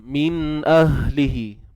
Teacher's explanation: min ahlihi, pangkal kerongkong kita, huruf ha. Untuk hi, ahlihi, maksilah qasirah ataupun maksilah sughra. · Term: ha simpul